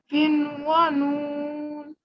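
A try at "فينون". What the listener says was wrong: Okay, remember the vowel has to be 2 seconds.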